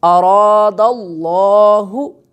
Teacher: را بھی پر پڑھیں گے، لفظ اللہ جو ہے اس کی لام جو ہے اس کو بھی پر کر کے پڑھا جائے گا